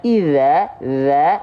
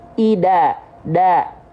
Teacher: Banyak orang melafalkan zal itu dibaca menjadi dal. Yang harusnya dibaca, ini salah besar, dibaca iza, za menjadi ida, da.